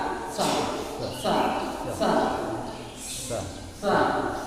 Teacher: Nah tidak ada getaran karena dia huruf s